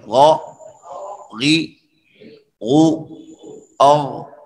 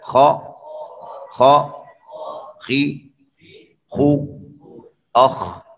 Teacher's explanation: غین میں جہر کی وجہ سے سانس بند آواز بلند، اور خا میں ہمس کی وجہ سے سانس جاری آواز پست۔ رخوہ میں دونوں برابر ہے، دونوں میں آواز جاری اور حرف نرم، اور استعلاء میں دونوں برابر موٹے پڑے جاتے ہیں دونوں، اور استفاء انفتاح میں یہ تفخیم تھوڑی کم ہو جاتی ہے، باقی یہ مستعلیہ ہے، پر پڑے جاتے ہیں۔